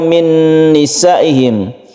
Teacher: karena Nun itu bertasdid maka dibaca ghunah makanya disebut idgham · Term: Idgham bunah